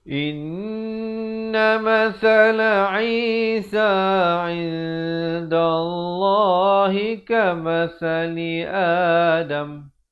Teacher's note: Sa di hujung lidah ini mesti keluar di antara 2 gigi itu.